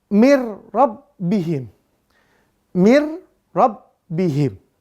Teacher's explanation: dengan huruf ro ya maka bunyi Nun sukunnya diidgamkan dilebur kepada huruf ro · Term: bila gunnah